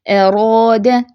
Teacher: اب یہ را پہ زبر ہے تو یہ را پور ہوگی · الراء المفخمہ میں دیکھیں پیچھے سے جڑ جو ہے وہ پیچھے سے اٹھی ہوئی ہے، اور آگے را کا جو مخرج ہے، زبان کی نوک را کے مخرج پہ ہے، تو اس کا بھی آپ نے خیال رکھنا ہے۔